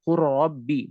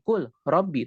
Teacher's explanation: lamnya hilang dan dia idgham idghamnya adalah idgham Tamil masuk ke dalamnya hilang alamnya secara zat